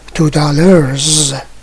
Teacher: The pronunciation of S is changed. It is no more S, but Z.